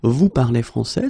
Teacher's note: we just need to raise the voice at the end